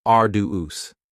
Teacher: arduous has 3 syllables, and the stress is on the first syllable.